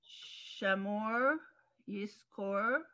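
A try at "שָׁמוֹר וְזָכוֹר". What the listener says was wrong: That's a vav. Vizachor. Zion.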